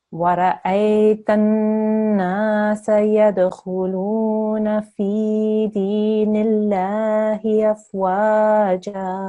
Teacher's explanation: we have a qalqala letter here, which is our dal, so we need to make a slight jerking sound there.